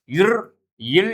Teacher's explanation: மேல்வாயை நாக்கின் நுனி வருடுவதால் பிறக்கும் எழுத்துக்கள்